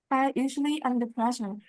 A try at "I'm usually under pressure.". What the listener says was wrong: I'm, and I need to hear the M, Knockling, okay? I'm usually under pressure.